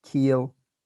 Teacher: In keel, the vowel is spread or non-round, and my lips are spread out.